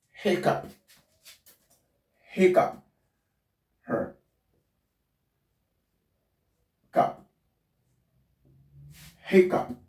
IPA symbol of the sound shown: p